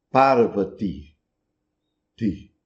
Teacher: Enquanto que em hindi vai ser pronunciado Parvati, ti, no final. Um I curto, fraco.